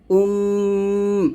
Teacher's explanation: উম এরকম দুই ঠোঁট মিল করে মিম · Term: গুন্নাহ